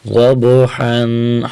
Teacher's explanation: حرف ضاد کو موٹا کریں گے اور ضاد کی حرکت ضاد کے زبر کو اس با کے ساتھ ملائیں گے